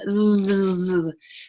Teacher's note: that TH sound, our tongue has to come forward in between our teeth